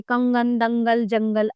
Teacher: अनुस्वार इनका उच्चारण करते समय नाक से ध्वनि निकलती है